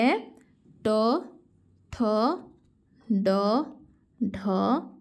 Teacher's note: ଢ ମୂର୍ଦ୍ଧଣ ତାହେଲେ ଏଇଟା କେଉଁ ବର୍ଣ୍ଣରେ ଗଲା ମୂର୍ଦ୍ଧଣ ମୂର୍ଦ୍ଧାକୁ ସ୍ପର୍ଶ କରୁଛି ମୂର୍ଦ୍ଧାକୁ ସ୍ପର୍ଶ କରୁଥିବା ହେତୁ ଏଗୁଡ଼ା ମୂର୍ଦ୍ଧାନ୍ୟ ବୋଲି କୁହାଯାଉଛି